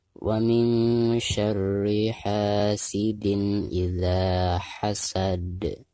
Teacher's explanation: Nah, perhatikan di ujung bacaan ini adalah huruf qalqalah ya, yaitu dal. Maka ketika diwakofkan suara dal tersebut harus dipantulkan. Bahkan harus dipantulkan dengan suara yang lebih jelas, lebih besar ya, karena dihukumi qalqalah kubro.